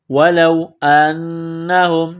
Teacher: نون مشدد ہے، غنہ کریں گے، آواز ناک میں چھپائیں گے، ہا کو میم کے ساتھ ملانا ہے۔